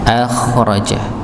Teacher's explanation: kha termasuk huruf yang tebal. Maka ketika dia dalam keadaan sukun pun maka dia tetap dibaca tebal. Akhraja. Tapi sekali lagi untuk huruf kha maka tidak perlu berlebihan dengan menyerakkan tenggorokan, apa suaranya kelihatan serak banget.